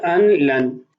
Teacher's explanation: انہ ظن ان لن یحور، محل استشہاد ہے ان لن، یہاں ادغام تو ہوگا غنہ نہیں ہوگا اس لیے کہ لام اور را جب آ جائیں حروف یرملون میں سے تو غنہ نہیں ہوتا